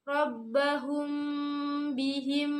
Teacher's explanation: Rabbahum, kemudian terdapat hukum bacaan ikhfa syafawi karena mim bersukun bertemu dengan huruf ba, ditahan dan dibaca samar